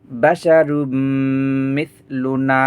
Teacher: এখানে দুই পেশ তানবিন, তানবিনের পরে এখানে মিম আসছে, তাই মিলিয়ে তানবিনকে মিমের সাথে মিলিয়ে গুন্না করে পড়তে হবে।